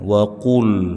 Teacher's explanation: lam sukun dibaca dengan jelas. Posisi mulut dibuka jangan dimonyongkan.